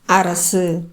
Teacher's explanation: அரசு அப்படிங்கறதுல உகரம் வந்து முழுமையா ஒலிக்கல இது அரை மாத்திரை அளவுல தான் இருக்குது. இதுக்கு முன்னாடி இது எந்த வகையில் வருது அப்படின்னு பாத்தீங்கன்னா முன்னாடி உயிர்மெய் எழுத்து இருக்குது. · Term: குற்றியல் உகரம்